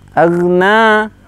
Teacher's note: Aghna 1 ayunan saja, jangan terlalu panjang. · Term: mad tabi'i